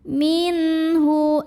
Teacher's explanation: nun sukun ini dibunyikan dengan izhar atau jelas bunyi n-nya ya. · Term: izhar halqi